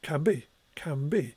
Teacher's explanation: the bilabiality of the bur sound has spread into the preceding nasal · when spoken might sound like can be, with an M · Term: assimilation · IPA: /kæn bi:/ → [kæmbi:]